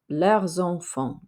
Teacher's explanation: normally we don't say the s but because it's followed by a vowel we can make a liaison there